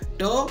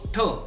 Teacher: ટ અલ્પપ્રાણ છે અને ઠ મહાપ્રાણ છે.